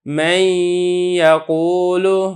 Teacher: نون ہے اور اس کا ادغام ہو رہا ہے یا کے اندر ادغام ناقص کے ساتھ